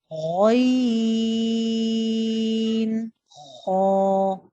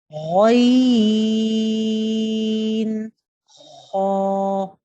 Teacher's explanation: ادنی حلق سے 2 حروف ادا ہوں گے، غین، خو۔ دیکھیں بالکل اسٹارٹ سے ادا ہو رہے ہیں، غین، خو۔